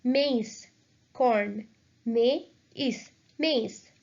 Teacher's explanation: We have to just separate the vowels and pronounce them separately.